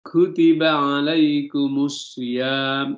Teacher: Di sini kutiba alaikumus syiyam, langsung masuk. Mu ada lamnya di depan tidak dibaca. Kutiba alaikumus syiyam, itu syamsiyah namanya. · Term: alif lam syamsiyah